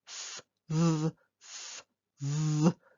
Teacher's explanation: F is a blowy sound and V is a harder voiced sound.